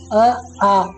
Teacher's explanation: ಉದಾಹರಣೆ ನೋಡೋದಾದ್ರೆ ಅ ಆ ಇವುಗಳನ್ನ ಉಚ್ಚಾರ ಮಾಡಬೇಕಾದರೆ ಇದರ ಒಂದು ಉಸಿರು ಏನಿದೆ ಆ ಉಚ್ಚಾರ ಮಾಡುವಂತಹ ಉಸಿರು ನಮ್ಮ ಕಂಠದಿಂದ ಉತ್ಪತ್ತಿಯಾಗುತ್ತೆ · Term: ಕಂಠ್ಯ ವರ್ಣಗಳು